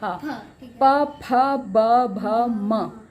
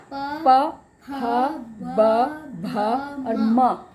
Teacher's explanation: प फ ब भ और म, पांचों जो अक्षर हमने बोले ओठ टच हुए